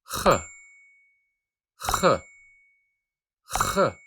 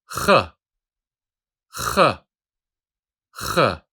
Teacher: this sound doesn't exist in the English language, but it is easy to pronounce it. Just scratch the back of your throat and say ch, ch.